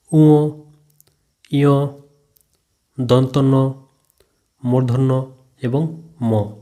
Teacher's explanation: মুখ মধ্যস্থ বায়ু শুধু মুখ দিয়ে না বেরিয়ে নাক দিয়ে অর্থাৎ নাসিকা দিয়েও বের হয়। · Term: নাসিক্য বর্ণ